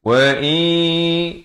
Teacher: Dan kemudian wa'i masuk berserta dengung. Daripada wa'in jadi wa'i yakul. Di sini masuk tanpa dengung.